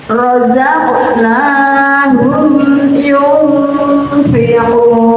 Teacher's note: Jadi nun sukun dibaca samar dengan fa dengung. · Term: ikhfa hakiki